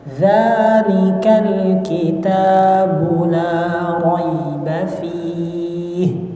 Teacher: La raiba fih, jangan terlalu lama ditahan di huruf ya-nya